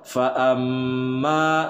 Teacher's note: Fa bukan pa amma tapi fa am. Nah, mim bertasydid, hukum bacanya adalah gunnah, ditahan 2 harokat